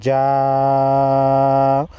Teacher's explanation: بڑی مد ہے 5 الف کے مقدار کھینچیں گے